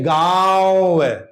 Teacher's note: हवा नाक और मुख दोनों से निकलती है उन्हें अनुनासिक कहते हैं।